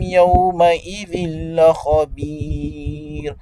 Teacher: vous avez idgham parce que tanwin kasratain suivi par la lettre lam donc il ram bi ghayr gunna la khabir ici on s'arrête Donc, on mise la lettre Ra, on met un soukoun, on la lit avec tawqiq.